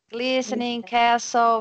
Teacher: So you saw that we don't pronounce the T, right?